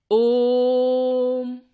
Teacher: इन स्वरों के उच्चारण में तिगुना समय लगता है। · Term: प्लुत स्वर